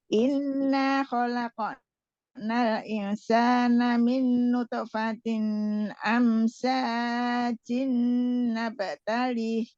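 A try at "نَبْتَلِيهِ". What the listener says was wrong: Nabtali panjang, ada ya.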